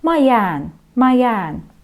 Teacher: И обращаем внимание на то, как мы произносим две гласные «а» подряд, протягиваем.